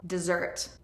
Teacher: Dessert has the stress on the second syllable.